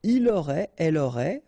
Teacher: Il aurait, elle aurait, final T not pronounced, so phonetically exactly the same form here